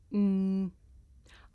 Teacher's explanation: I make this sound by closing my lips and letting the sound come through my nose. Mm. I can even feel my nose vibrating.